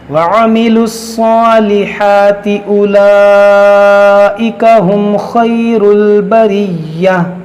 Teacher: میم ساکن کے بعد خا ہے, یہاں پر اظہار شفوی ہوگا